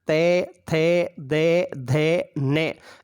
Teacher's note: तू यानी ते वर्गीय वर्ण, ते थे दे धे ने, इन सब का उच्चारण स्थान दंत होगा। फिर ले का उच्चारण स्थान भी दंत है, और से सर्प का से है, सीकर का से है, इसमें उच्चारण स्थान दंत माना जाता है।